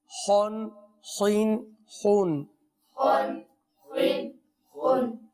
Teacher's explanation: خا کو پر پڑھنا ہے حروف مستعلیہ میں سے ہے